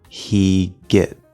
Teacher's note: as we push out the g we can kind of hear a bit of a break between these two words